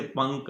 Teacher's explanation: अब जो अनुस्वार है ना, अनुस्वार, उसका उच्चारण स्थान नासिका है।